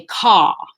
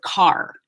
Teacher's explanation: most dialects in the UK are non-rhotic, which means they would say caw instead of car.